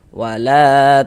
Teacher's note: Ada alif sebelum alif ada harakat fathah. Maka huruf yang memiliki harakat fathahnya dibaca panjang sehingganya la dibaca panjang. Mad thobi'i panjang dua harakat sesuai dengan rumus tiga yang warna hitam.